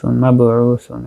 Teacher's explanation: মাবউসুন এখানে হচ্ছে বা সাকিন, কলকলা হবে, কলকলায় সুগরা, কারণ যেহেতু শব্দের মাঝখানে আসছে।